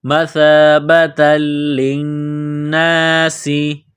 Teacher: سین میں سیٹی کی آواز پیدا کرنا ہے، سین کو باریک کرنا ہے